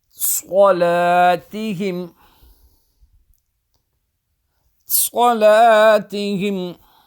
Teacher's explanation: So here swad is behind the teeth, full mouth letter. A bit whistling at the beginning of the swad, and then straight away read with the full mouth.